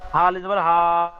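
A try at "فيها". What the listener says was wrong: জি আরো বেশি করে টান দিয়ে বলেন। তিনালি টান দিয়ে পড়তে হবে। বানান করলে তিনালি টান দিয়ে পড়বেন, রিডিং পড়লে তিনালি টান দিয়ে পড়বেন।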